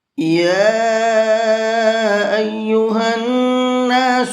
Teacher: یا کے اوپر یہ چھوٹا مد ہے تو اس کو 1 سے 3 الف کے برابر کھینچ کر کے پڑھیں گے۔